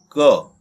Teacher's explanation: क बोलने में, इस व्यंजन को बोलने में हमारे मुंह से कम वायु निकलेगी, तो ये का अल्प प्राण का उदाहरण है।